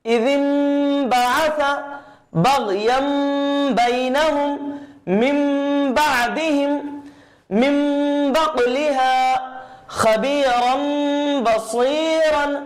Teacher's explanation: ہم تنوین اور نون ساکن کی آواز کو میم سے بدل کے پڑھیں گے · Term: اقلاب